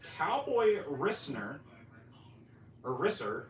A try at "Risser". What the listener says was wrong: Cowboy Rishner? it sounds like you're saying Cowboy Listener.